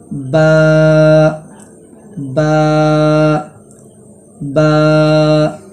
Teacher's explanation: دونوں ہونٹ مل کر با ادا ہوتا ہے اور اس کو ایک الف کے برابر کھینچ کر پڑھیں۔